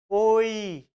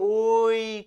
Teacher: যেমন কি ওই, এই যে ওই করছি এটা হচ্ছে প্লুতস্বর। টেনে, টেনে উচ্চারণ করছি।